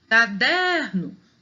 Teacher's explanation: caderno o der é mais forte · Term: sílaba mais forte